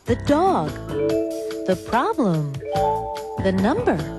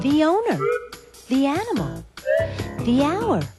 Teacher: you hear thee before a vowel sound